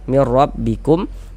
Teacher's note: Huruf ra memiliki baris fathah ya, harokat fathah dibaca tafkhim.